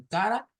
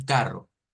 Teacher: tenemos eres suaves y er fuertes se nos ha enseñado la er suave como en cara y la er fuerte como en carro